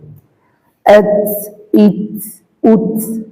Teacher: আত, ইত, উত, হালকা বাতাস বের হবে সাকিন করার পরে। তায়ের উপরে সাকিন হলে হালকা বাতাস বের হয়।